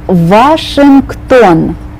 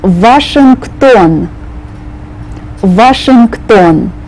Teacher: you start on the V sound not the W sound